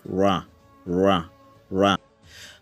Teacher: so right is a retroflex sound